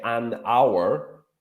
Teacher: you would say an hour for like a period of 60 minutes because the H sound is not pronounced